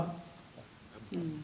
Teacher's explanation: And ba, you say ab, you close the air passage by bringing the lips together